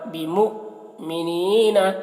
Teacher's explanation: یہ حمزہ ساکنہ ہے تو جھٹکا لگ رہا ہے